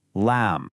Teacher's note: A lot of American English speakers make their L sound, what we call a dark L, farther back in their mouth. For the Arabic lamb, you want to make a light L. The very tip of your tongue needs to be right up against the back of your front teeth.